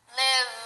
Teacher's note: put your hand on your throat live this is voiced you're using your voice